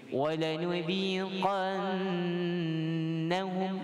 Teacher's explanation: kita sebut qan dengan dengung pada nun tasydid. Nun syaddah wajibun gunna.